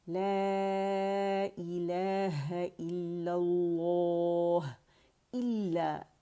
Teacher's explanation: مشدد ہے، جماؤ دیں گے اور ہا کا ہمس واضح کریں گے